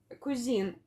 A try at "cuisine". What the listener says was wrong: Yeah, there we go.